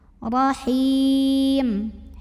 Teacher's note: Huruf ra dibunyikan secara tafkhim karena ra-nya berbaris fathah. Maka bacanya ditebalkan, pangkal lidah kita naikkan.